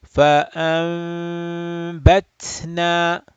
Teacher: So ba follows noon sakin. And because ba follows noon sakin, there is a hidden meme sound right there.